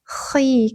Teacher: Bukan ti tapi th tebal ya batina khiyama khiyama ko tenggorokan bagian atas khi ketika kasrah tebal ya teman-teman